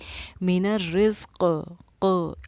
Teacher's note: और किसी भी हुरूफ़ पर अगर ज़ेर है और हम वक़्फ़ कर रहे हैं तो हम उस पर जज़म देकर सांस तोड़ते हैं, और जब क़ाफ़ पर जज़म देंगे तो वो हुरूफ़ क़लक़ला में से बन जाएगा, इसीलिए हमारी आवाज़ लौटेगी